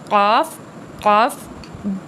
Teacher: قاف زبان کی جڑ اور تالو سے نکلے گا